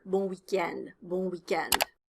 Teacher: End is the stress syllable here. It's longer.